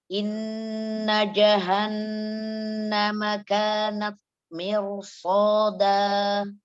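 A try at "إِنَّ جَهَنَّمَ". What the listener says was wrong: Jadi suara jimnya, jadi suara jimnya jangan terlalu kering. Ya, itu lidahnya Umi itu terlalu mundur dia. Ja, jadi bunyi gini. Ja, ja, ja, nggak ja. Ja. Kuatkan bacanya. Ja. Iya, lidahnya jangan tarik ke dalam, lidahnya jangan tarik ke dalam, biasa aja. Ja. Ja.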